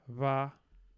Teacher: I hear a voiced bilabial fricative